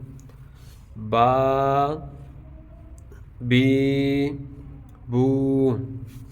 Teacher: تو کھڑی حرکات حروف مدہ کے قائم مقام ہیں، اس لیے کھڑی حرکات کو حروف مدہ کی طرح ایک الف یعنی 2 حرکات تک کھینچ کے لمبا کر کے پڑھیں گے